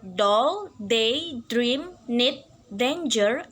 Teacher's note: D is voice. D is made exactly the same way as that of T. D is voice alveolar stop.